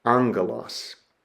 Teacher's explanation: that first gamma is pronounced with an N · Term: nasal gamma